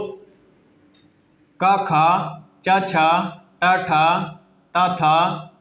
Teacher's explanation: वर्ग के प्रथम व द्वितीय वर्ण यानी प्रथम का का और द्वितीय ख का यानी प्रथम और द्वितीय वर्ण ये अघोष व्यंजन कहलाते हैं